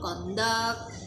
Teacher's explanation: Don't confuse it with the noun conduct, which means somebody's behavior. This is the verb conduct. The stress is on the second syllable.